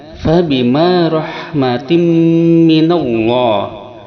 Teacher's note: Idgham artinya memasukkan tanwin kasroh ke dalam mim, sedangkan ma'al gunnah disertai dengan dengungan, sehingga memasukkan tanwin kasroh pada mim ini disertai dengungan pada hidung 2 harakat. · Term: idgham ma'al gunnah